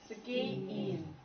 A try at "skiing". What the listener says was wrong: Yeah, your ing needs, your ng needs work. So where's ng made? Not in your nose. The middle of your tongue touches the roof of your mouth, not your tip. Ing. Ing. Not ying, ing.